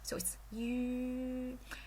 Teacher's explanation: You say yi first, and then you round your lips.